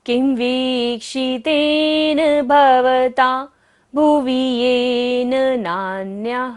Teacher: क के ऊपर बिंदी और बाद में क्या है व, य र ल व होता है, बिंदी का उच्चारण क्या होगा म।